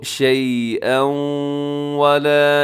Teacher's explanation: شیئا میں تنوین کے بعد واو یرملون کا یہاں پر بھی ادغام ہو رہا ہے ، تو شیئا ولا يقبل منها، يقبل میں قاف موٹا کیجیے